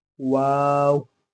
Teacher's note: इसको पढ़ते वक्त होंठ गोल होंगे